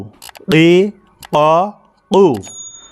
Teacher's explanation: একেবারে জিহ্বার গোড়ার থেকে ভারী হবে, মোটা হবে। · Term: কফ